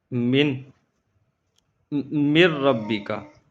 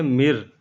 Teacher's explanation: روانگی کے ساتھ پڑھتے ہوئے ہم نے نون کو نہیں پڑھنا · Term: ادغام